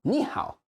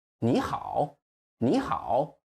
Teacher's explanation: We stress the end, or you just extend the end.